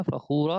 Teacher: اگر ہم وقف کریں گے پھر تو نون نہیں پڑھیں گے